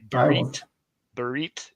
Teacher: if it's a final tav, you will hear a softer T sound.